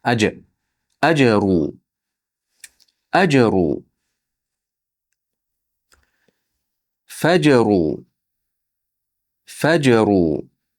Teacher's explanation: Mana bu yerda jim harfimiz sukun bilan kelyapti. Unda qalqala bo'ladi.